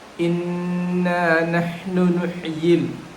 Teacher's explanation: They are giving a additional madul asli after the nahnu.